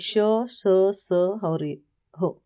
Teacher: उष्म व्यंजन यानी कि हवा रगड़कर रगड़ खाकर निकलती है। जिससे घर्षण और ऊष्मा यानी गर्मी पैदा होती है उसे ऊष्म व्यंजन कहते हैं।